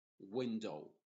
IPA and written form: ˈwɪndoʊ (Window)